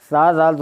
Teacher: सा, ज़ाल, ज़ा, ज़बान का सिरा और ऊपर के दांतों की जड़ से अदा होता है। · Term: रूफ़े लासाविया